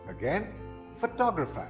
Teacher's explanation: The second syllable is the one that is stressed.